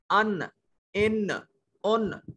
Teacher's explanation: آپ کی زبان کی نوک اوپر کے 2 سامنے والے دانت کی جڑ کے ساتھ لگ رہی ہے. ان، اوپر والے سامنے والے جو 2 دانت ہیں ان کے نیچے، ان کے تالو کے ساتھ، ان کی جڑ کے ساتھ زبان کی نوک لگ رہی ہے. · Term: نون